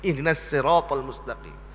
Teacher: Dia baca pada surah Fatihah pada ayat yang ke-6 dan yang ke-7 dengan sin pada huruf sad.